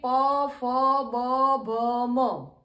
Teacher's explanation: दोनों होठ एक दूसरे का स्पर्श करते हैं वोह ओष्ठ व्यंजन कहलाते हैं